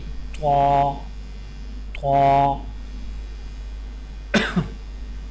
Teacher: طاء کی ادائیگی میں زبان کی نوک کو سامنے والے اوپر کے 2 دانتوں کی جڑ سے لگا کر اور زبان کے پچھلے حصے کو تالو کی طرف بلند کرتے ہوئے موٹی آواز میں پڑھیں